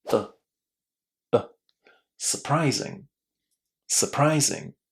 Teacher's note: In English, when you've got u and r and there is another consonant, it's definitely not going to be pronounced as u in this word because that first syllable is not stressed. That letter u is pronounced in a very very short way as uh